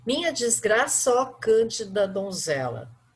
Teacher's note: o final de uma palavra que tem uma vogal, o início da outra palavra também com uma vogal, que a gente chama de vogais átonas, ou seja, que não tem um som tão forte, essas vogais elas vão se agrupar em uma só sílaba